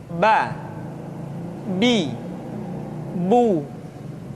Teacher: Huruf Ba dikeluarkan dengan cara merapatkan kedua bibir kita. Ba, bi, bu.